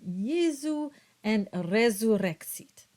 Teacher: So it's just the emphasis placed on the vocalizing of the S sound, which is closer to a Z sound. So you would get a very soft production of a Z sound as in Jesu and resurrexit.